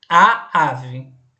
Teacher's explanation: tá no singular sim é feminina e começa com a tônica vejam que o a é a sílaba mais forte